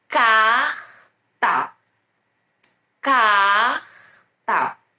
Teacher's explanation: Esse R aqui, gente, junto do C e do A, é como é um R que ele é produzido aqui, ó, nessa região da garganta. Ele é como, sabe quando a gente vai escarrar, cuspir, e a gente precisa puxar o que está incomodando a gente na garganta, então.